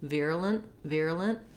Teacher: we almost leave that vowel out entirely. You want to go as quickly as you can from your L sound to your N sound. Virulent, virulent.